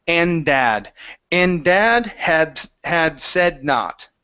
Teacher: when one word ends with a D and the next one starts with it, we only want to pronounce one D sound. So it's and dad.